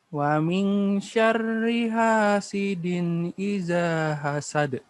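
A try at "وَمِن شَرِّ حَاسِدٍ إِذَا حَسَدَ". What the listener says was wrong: Ikhfanya 3 ya. Tambah sedikit lagi. Wa min 3. Wa min gitu ya.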